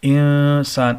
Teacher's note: یہاں پر بھی نون ساکن ہے، آگے سین ہے جو حروف اخفا میں سے ہے، یہاں پہ اخفا ہوگا